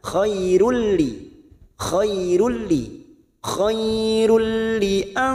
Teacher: Ada dumat tanwin bertemu lam, namanya bacaan idgham bila guna, hanya masuk pada huruf lam tanpa ditekan, tanpa mendengung